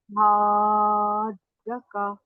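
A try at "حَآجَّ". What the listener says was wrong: थोड़ी सी आवाज भी ऊंची करिए, हाज, जीम की आवाज को थोड़ा सा हा को लंबा 6 हरकत।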